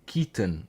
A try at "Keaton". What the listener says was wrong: It's Keaton, but like you don't really put the emphasis on the O. It's not Keaton. It's Keaton.